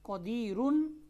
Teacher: اگر ہم اس کو ملا کے پڑھتے ہیں قدیرن تو را موٹی پڑھی جا رہی ہے، لیکن جب آپ یہاں پر رک رہے ہیں تو یہ را باریک پڑھی جا رہی ہے۔